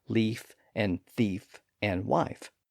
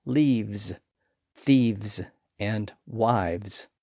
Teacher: Now that's a very old development in the language, and it appears because the F and V sounds are another one of those voiceless and voiced pairs. Again, they're essentially the same sound, except that the F sound is voiceless and the V sound is voiced